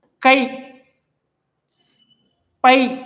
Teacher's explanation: வருகின்ற பொழுது அதனுடைய மாத்திரை அளவு என்னவா இருக்கும் இரண்டு மாத்திரை தான் இருக்கும் தனக்குரிய ரெண்டு மாத்திரை அளவுல முழுமையா ஒலிக்குதா தனித்து வரப்போ